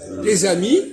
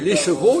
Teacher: Quand ça commence par une voyelle, il y a liaison. Les amis, il y a liaison. Mais si je dis les chevaux, il n'y a pas de liaison.